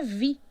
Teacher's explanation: O T permanece, em português é vida, com D, como também é em espanhol. E em francês é vi, o D desaparece completamente